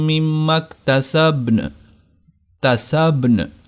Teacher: تسبن با کو بھی پڑھنا ہے اور نون کو بھی ظاہر کرنا ہے، تو دونوں حروف کو ظاہر کرنا ہے۔